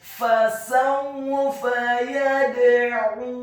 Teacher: Fasawfa yad'u, kata yad'u, huruf ya-nya dibaca tipis fathah 1 harokat, huruf dal-nya dibaca sukun dan wajib untuk diqalqalahkan atau dipantulkan